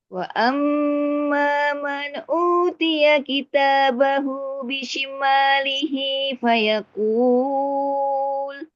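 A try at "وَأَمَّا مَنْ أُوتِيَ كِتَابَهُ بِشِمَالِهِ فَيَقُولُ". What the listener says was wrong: Ya, sekali lagi diulang man-nya, hati-hati man, jangan man, jangan ada tekanan nunnya ya. Man, Tidak juga memantul, tapi menekan dia, jadi lompat makhraj ke hamzah.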